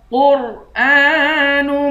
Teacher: قاف کو را سے ملا کر قاف اور را دونوں کو موٹا پڑھیں گے · حمزہ پر کھڑا زبر ہے اس کو ایک الف کی مقدار کھینچ کر پڑھیں گے